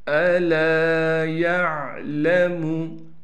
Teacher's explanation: لام کے بعد الف ہونے کی وجہ سے لام کو ایک الف کی مقدار کھینچیں گے